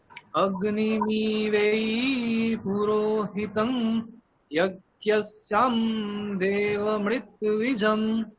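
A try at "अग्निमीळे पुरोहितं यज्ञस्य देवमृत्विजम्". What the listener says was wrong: এগুলো ভুল হচ্ছে, প্রত্যেকটা স্বরই ভুল হচ্ছে। হ্যাঁ, ওই যেগুলোর উপরে দাগ রয়েছে ওইগুলো মানে উদাত্ত ওই শরীর স্বর বলতে হবে ওইগুলোতে, তো ওইখানে গিয়ে টানতে হবে। অগ্নিমি এখানে টানতে হবে, আপনি অগ্নিমি ডে এখানে টানছেন, ওটা করলে হবে না।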